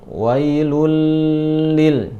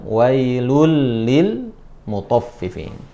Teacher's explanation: bilagunnah misalnya wailul Lil muthaffifin wailul Lil muthaffifin bukan wailul Lil jadi tidak ditahan langsung masukkan